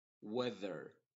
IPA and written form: ˈwɛðər (Weather)